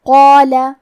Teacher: ہمیں قاف کو موٹی آواز میں پڑھنا ہے کیونکہ اس کے بعد مد الف ہے اور مد الف اپنے پیچھے والے حرف کا حکم لیتا ہے تفخیم میں اور ترقیق میں، لہذا ہمیں مد الف کو بھی بھاری آواز میں ادا کرنا ہے۔